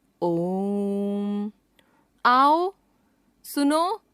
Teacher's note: इस स्वर के उच्चारण में ह्रस्व से तिगुना यानी कि 3 मात्राओं का समय लगता है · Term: प्लुत स्वर